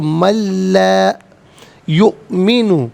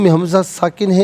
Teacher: یؤمن میں حمزہ ساکن ہے، اسے جھٹکے کے ساتھ پڑھا جائے گا